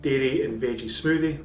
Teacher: the R is more of a D sound